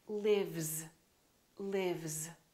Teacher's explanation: Look at this word, live, live. This is a voiced sound, v, v. Therefore, this S is also going to be a voiced sound, which is a Z,